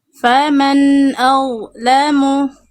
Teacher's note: ngalir suaranya deras karena dha sifatnya rokhwah Bunda. Rokhwah itu mengalir suara.